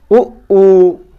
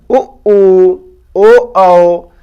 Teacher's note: वे स्वर जिनके उच्चारण करते समय ओष्ठ गोल हो जाते हैं, अर्थात वृत्त जैसी आकृति बना लेते हैं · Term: वृत्ताकार स्वर